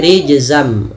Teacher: masukkan tanwin ke huruf mim awalnya rijzan ketemu mim menjadi rijzam nunnya diganti dengan mim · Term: idgham bighunah